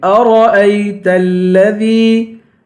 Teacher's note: أرأيت الذي را کو پر پڑھیں گے، حمزے کو یا سے ملائیں گے، أرأيت الذي دال کو یا سے ملا کر یا کو ایک الف کی مقدار کھینچ کے پڑھیں گے